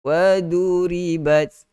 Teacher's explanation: Waduribat, kena tebal. Waduribat, ri nipis huruf ra, bat ada sedikit hamas. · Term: sifat itbaq